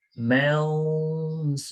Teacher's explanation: bibir saya buka, saya datarkan, lalu lama-lama bibirnya saya kerucutkan karena setelahnya adalah huruf tebal. Mansura. Ya, ini cara membacanya. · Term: ikhfa